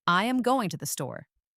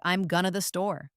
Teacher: The going to collapses into gonna. This is incredibly common.